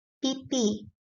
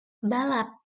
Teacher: P bunyi lepas jika diikuti vokal. Contohnya, pipi. · p bunyi tak lepas jika terdapat pada suku kata tertutup